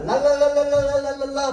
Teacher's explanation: 혀 끝이 입천장 위쪽에 윗니 쪽에 살짝 붙으면서 공기는 혀의 양옆으로 흘러 지나갑니다. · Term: 흐름 소리